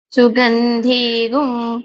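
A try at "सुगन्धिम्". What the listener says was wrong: ধিগুং হয়ে যাচ্ছে, হ্যাঁ? ধিগুং, ধয় রস্বইকার, গয় গয় অনুস্বার, এরকম চিন্তা করবেন, হ্যাঁ? গয় গয় অনুস্বার, ধিগুং এরকম করবেন, ধিগুং এরকম নয়, ঠিক আছে?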